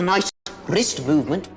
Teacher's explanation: You just heard the distinctive rolling R that is common to the Scottish accent.